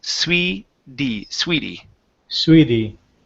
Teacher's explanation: we're going to switch that T to what's called a flap T or a D sound